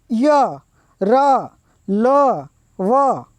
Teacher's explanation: જે વર્ણનો ઉચ્ચાર ગળાના અંદરના ભાગથી થાય એટલે આપણા ગળું છે ગળાના અંદરના ભાગથી જે વર્ણનો ઉચ્ચાર થાય તેને અંતસ્થ વર્ણ કહેવામાં આવે છે. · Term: અંતસ્થ વ્યંજનો